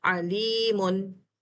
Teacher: मुन यानी नून को ज़ाहिर करके छोड़ दिया